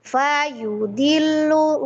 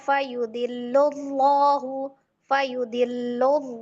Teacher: fa yu di itu sama-sama pendek semua. Tidak boleh ada salah satu yang lebih panjang. Jadi bukan fayudillu enggak langsung aja fayudillahu.